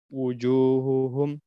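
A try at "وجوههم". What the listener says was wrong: Jelas, dia memang khofak, dia memang samar, sifatnya memang lemah, tapi jangan terlalu lemah juga ya. Wujuhuhum, huhu, nah, gitu. Jangan nanti malah dia seperti itu malah kurang. Wujuhuhum, jibahuhum.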